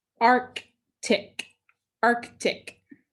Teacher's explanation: the accent was on the first syllable